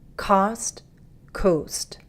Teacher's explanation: huge difference in the lip position the O has more of a rounded position like a circle